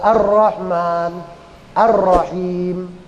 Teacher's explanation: al-nya disebut ALS syyamsiyah Al syyamsiyah itu dulu pernah saya sampaikan alnya enggak bunyi ya enggak dibaca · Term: alsyamsiah